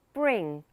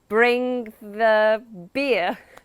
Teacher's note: In a Glaswegian accent, the R is generally tapped. That means the tongue taps off the roof of the mouth.